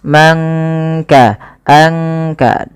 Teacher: disamarkan suara nunnya kepada huruf kaf. Mangka, angka, langsung kepada makhraj daripada huruf kaf itu sendiri. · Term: ikhfa